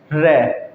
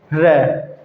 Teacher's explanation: र का उच्चारण करते समय जिह्वा, जो जीभ होती है उसमें कंपन होता है, र, ठीक है, जब आप ऊपर जीभ को लगाकर नीचे छोड़ेंगे तो कंपन उत्पन्न होगा, ठीक है, र, ठीक है, अतः इसे प्रकंपित व्यंजन भी कहते हैं।